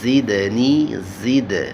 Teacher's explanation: زا کو حروف صفیریہ میں سے ہے، سیٹی کی آواز پیدا ہوگی